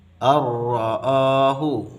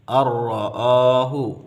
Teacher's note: Lebur nunnya kepada ra, kemudian tidak kita dengungkan, tidak boleh kita dengungkan. Ar-ra'ahu. Ar-ra'ahu muncul tasydid di sini sebagai tanda atau memberikan isyarat bahwa bacaan ini adalah idgham. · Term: idgham bila gunnah